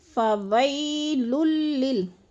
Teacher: یالین کو لمبا بھی نہیں کرنا اور جھٹکا بھی نہیں دینا، آرام سے ادا کرنا ہے